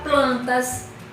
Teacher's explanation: Um exemplo de uma paroxítona é a palavra plantas. Plan é a sílaba mais forte desta palavra, tornando ela uma paroxítona